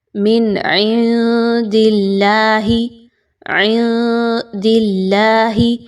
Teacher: اللہ کے حرف سے پہلے دال کے نیچے چونکہ زیر ہے تو اس وجہ سے اللہ کے حرف کو باریک پڑھا جا رہا ہے، پر نہیں پڑھنا۔ · آگے چلیے تو نون ساکن کے بعد دال کا حرف آ رہا ہے اور دال حروف اخفا کے 15 حروف میں سے ایک ہے۔ آپ نے یہاں پر نون کی آواز کو مخفی کرنا ہے، چھپانا ہے، واضح نہیں پڑھنا۔